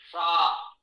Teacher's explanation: मूर्धा पर जिह्वा स्पर्श करे तो मूर्धन्य शा